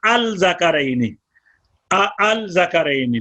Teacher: لام کا زال جو ہے یہ حروف شمسی میں سے ہے, لام کا زال میں ادغام ہوا, اور دوسرا حمزہ جو ہے اس کو الف سے بدل دیا تو ذکرینی ہو گیا.